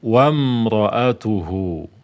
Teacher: Jadi lompat saja dari wa ke mim sukun, wam. Alifnya ini, ya, hamzah ini tidak lagi dibaca. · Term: hamzah wasal